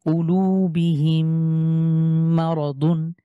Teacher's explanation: মিম সাকিনের পরে মিম হলে আমরা এই মিমটাকে তাসদিদ দিয়ে মিলিয়ে গুন্না করে পড়বো